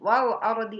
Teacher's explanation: Wal ardi alif lam komaria. Ardi sebelumnya berharokat patah, maka ro-nya harus tebal. Ro tafkhim.